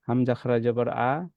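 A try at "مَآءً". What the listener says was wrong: হামজা খারা জবর হলো না তো, টান হলো না তো।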